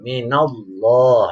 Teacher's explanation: Ada fathah ketemu lafaz Allah, itu yang disebut dengan lafzul jalalah tafkhim, atau membaca lafaz Allah dibacanya tebal, tafkhim itu tebal, minallah, ya.